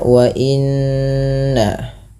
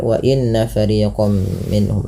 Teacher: Kemudian pada lafal wa inna fariqam minhum. Wa inna, tahan bunyi suara nun yang berharokat tasydid karena ia dikategorikan bacaan gunnah